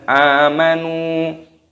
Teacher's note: Amanu, hamzahnya ada tanda alifnya dibaca panjang amanu.